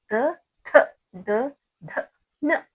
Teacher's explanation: दंत वाले व्यंजन यानी दांत को टच होकर जो पढ़ी जाती है उसको दंत वाले व्यंजन कहते हैं। दंत का मतलब दांत है।